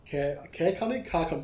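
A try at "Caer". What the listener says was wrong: Well, it's care. It's not car. Look, the one in The Witcher is with a K, so maybe with a C they pronounce it a little bit different.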